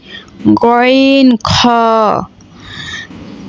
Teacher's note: ৩ নম্বর মাখরাজ, হলকের শেষ হইতে গইন খ